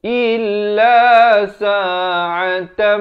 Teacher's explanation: Beza il dengan il. Hamzah bari kasrah bunyi i, bukan bunyi e.